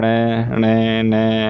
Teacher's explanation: नासिका विवर या मुख विवर दोनों मार्गों से एक साथ निकलती है। ऐसी उचित ध्वनियां नासिक कहलाती है। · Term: नासिक ध्वनियां